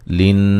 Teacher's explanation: لین نون مشدد پہ غنہ ضروری ہے